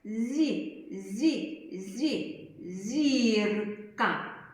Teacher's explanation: з приголосний він вимовляється твердо коли сам з з з а коли є голосна буква то він може м'яко вимовлятись